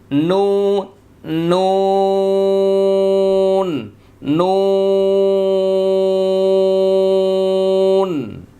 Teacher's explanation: জিহ্বার আগা তার বরাবর উপরের তালুর সঙ্গে লাগিয়ে একটি হরফ উচ্চারিত হবে। দেখেন একদম উল্টে যাবে, নুন নুন নুন।